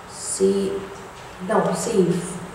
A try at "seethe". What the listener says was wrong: No, seethe. No, no V. Seethe.